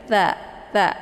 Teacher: Cara melafadzkan makharijul huruf tha ini yaitu ujung lidah bagian permukaan menempel di ujung gigi bagian atas ya, gigi seri bagian atas · sifat tha ini adalah lunak ya, atau kendor. Jadi jangan matha gitu ya.